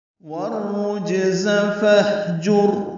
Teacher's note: را کو جیم سے ملائیں گے، جیم ساکن ہے، اس پہ قلقلہ ہوگا۔ زا تیز صفیر کی آواز سے جلدی پڑھیں گے۔ · واو ہونٹوں کی نا تمام گلائی سے ادا کرتے ہوئے را سے ملائیں گے، ادغام شمسی ہوگا، الف لام نہیں پڑھیں گے، را پر پڑھیں گے۔